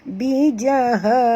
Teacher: Ha di sini ha simpol, jadi dalam, bunyinya di dalam, iaitu halkum.